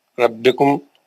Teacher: ربکم را موٹا پڑھا جائے گا. ربکم میم کا یہ آپ کا اخفاء نہیں, یہ آپ کا ادغام. میم کا ادغام حرف میم ساکن کا ادغام شفوی.